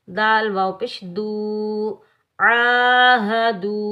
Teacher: دال واو پیش دو جو ہے یہ واو مدہ ہے۔ یاد رکھیں جب بھی واو ساکن سے پہلے پیش آ جائے تو یہ ہوگا واو مدہ، اس کو ہم ایک الف کی مقدار میں کھینچ کر ادا کریں گے۔ عین کو حلق کے درمیان سے ادا کریں گے، ہاں کو سینے والی طرف والے حلق سے ادا کریں گے، ٹھیک ہے؟